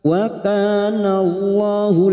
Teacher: lam jalalah yang sebelumnya fathah kita baca tafkim